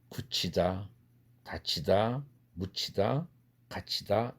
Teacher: 그래서 철자상은, 한국어 철자상은 디귿으로 써 있지만 드 사운드이지만, 드라는 음소이지만 뒤에 나오는 흐 사운드와 결합되면 한국어에서는 거센 소리로 변합니다.